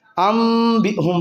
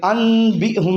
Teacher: نون ساکن کے بعد با آ گیا تو نون ساکن اور تنوین کو میم سے بدل دیں گے، اقلاب کا قاعدہ۔